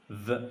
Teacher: ভি sound হচ্ছে ফ সাউন্ডের মতোই। ফ সাউন্ডে যেমন আমাদের উপরের পাটের দাঁত নিচে ঠোঁট ছিল, এখানে আপনাকে ভ বলতে হবে, উপরের দাঁত নিচে ঠোঁট